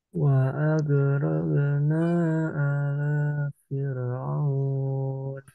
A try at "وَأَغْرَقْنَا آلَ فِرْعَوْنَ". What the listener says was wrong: A-nya panjang, la-nya hati-hati, enggak panjang. Alafir.